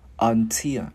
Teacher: Cái mình đá lưỡi chữ L vào until